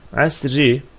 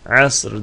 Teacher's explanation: Asri ki dururken Asr diye duracağız yani ra'nın sükunu ile duracağız